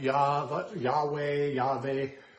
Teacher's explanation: we now know that there's no J sound in the Hebrew